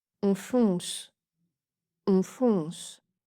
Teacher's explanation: On fonce, 2 fois le O nasal. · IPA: /ɔ̃/